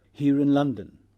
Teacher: English in cases of linking and orthographically present and phonemic lis final post vocalic R is pronounced when the next word starts with a vowel